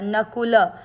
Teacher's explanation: तीसरा चरण देखेंगे न में मिक्स करना है। कु की मात्रा छोटी रखनी है और ल में मिक्स करना है।